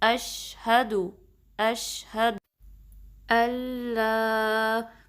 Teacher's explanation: شین میں تھوڑی سی وہ ساؤنڈ پائی جاتی ہے تفشی کی، جس کا مطلب ہے کہ آواز پھیل سی جاتی ہے، ٹھیک ہے. تو یہ شین کی پراپرٹی ہے، کیریکٹرسٹک ہے، اس کی صفت ہے، تو آپ کو وہ بھی مطلب واضح کرنا ہے.